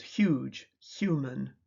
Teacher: In words such as huge, human, the phenemic transcriptions huge, human imply that the words begin with a voiceless fricative H followed by a voiced approximate Y. But the initial sound is phonetically a single sound, voiceless palatal fricative